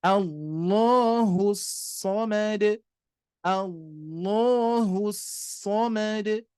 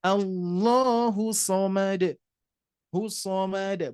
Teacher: Di sini ada alif lam syamsiyah atau idgham syamsiyah ya. Yang mana kita harus mengidghamkannya secara langsung tanpa memanjangkan huruf atau lafaz huruf hu